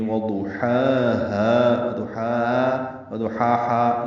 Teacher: وضحاها میں واو ضاد الگ ہیں، ضاد پر ہے، موٹا پڑھیں گے ضاد کو، ہا وسط حلق سے ادا کریں گے اور ہا اقصی حلق سے ادا کریں گے، دونوں میں فرق کرنا چاہیے۔